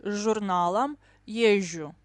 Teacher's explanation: СЖ, ЗЖ like long ж, always.